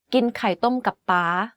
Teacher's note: The last word and syllable of this sentence is in high tone. You can hear that it's the only word in this sentence that has a high pitch without a falling tone.